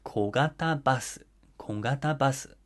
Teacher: goes up after the first syllable because of the phrase accent rule, but comes back down in the middle of the word · these words all fall into the middle high pitch accent category as their accent drops somewhere in the middle of each word